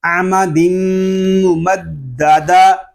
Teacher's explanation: دال میں شدت ہے، اس کو جماؤ کے ساتھ ادا کریں گے